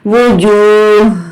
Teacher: ہا جب بھی آپ ہا کی دونوں زبر زیر پہ جب بھی حذف کریں گے، جب آپ ہا پر وقف کریں گے تو یہاں پر ہا ساکنہ ہو جائے گا اور یہاں پر آپ کو صرف ہا کی ہلکی سی آواز دینی ہے، سینے میں ہلکی سی وائبریشن ہوگی